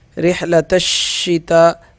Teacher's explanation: تا شین کے ساتھ سختی کے ساتھ ملے گا، اور اس تا پہ 5 الف کے برابر مد ہوگا